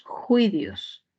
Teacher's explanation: En vez de utilizar la F, utilizamos la fricativa velar